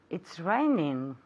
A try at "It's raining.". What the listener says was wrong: Rainy. is it? remember that NG sound at the end. You have to pronounce the NG, okay? So it's raining.